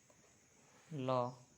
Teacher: जिसके उच्चारण में हवा जीभ के पार्श्व अर्थात बगल से निकल जाए, उसे पार्श्विक कहा जाता है